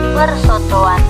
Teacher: untuk morpem pengucapannya seperti ada penambahan fonem W di dalamnya